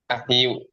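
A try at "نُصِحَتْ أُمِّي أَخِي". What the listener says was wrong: Akhi, seperti ini aja. Ini udah nggak bisa berubah akhi, tetap bunyinya akhi. Nusihat akhi.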